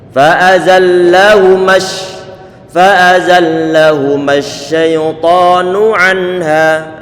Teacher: Tetapi di saat kita wasalkan, sambungkan dari fa'azallahuma, dipertemukan dengan asyaitan yang mana lamnya di sini adalah lam yang disukunkan, maka matnya perlu dihilangkan. Fa'azallahumah, langsung begitu.